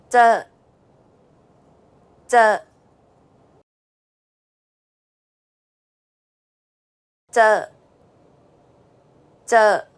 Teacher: English, however, focuses the tip of the tongue to contact the gum ridge, while in Thai, the middle part of the tongue, known as the blade of the tongue, is used to contact the area behind the gum ridge. Also, this is an unaspirated sound, meaning there shouldn't be a burst of air when pronouncing this sound.